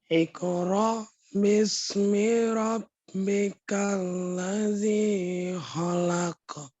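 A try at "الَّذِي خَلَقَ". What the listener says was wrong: Oke, ladzinya sekarang. Ladzinya kepanjangan. Rabbikal ladzi khalaq.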